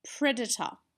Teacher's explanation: we live in Australia and we tend to use the schwa sound